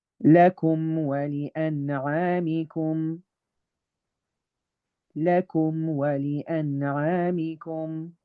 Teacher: Because that's the natural state of the meme. The meme naturally has to come with its own ghunna.